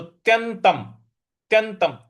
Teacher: यहां पे जो आधा त है उस पर हमको बल लगाना है, आघात देना है। और त्यंतम, आधा जो न है उस पर भी हमको आघात देना है, और उसके त के ऊपर जो अनुस्वार है उसका म में उच्चारण हमको करना है।